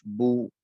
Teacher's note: پیش ہے تو اس کو ہونٹوں کو گولائی کے ساتھ ادا ہوتا ہے، ہونٹوں کی گولائی کے ساتھ، با پیش بو، ہونٹ گول ہو جاتے ہیں۔